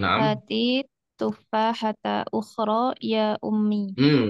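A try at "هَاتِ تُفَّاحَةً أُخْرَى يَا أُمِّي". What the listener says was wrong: Tanwin bu ya, tufahatan ya.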